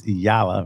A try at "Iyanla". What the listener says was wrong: Don't forget the N, Iyanla.